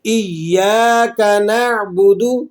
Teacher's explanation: یا کو ہم ایک الف کے برابر کھینچ بھی رہے ہیں کیونکہ یا کے بعد الف ہے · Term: الف مدہ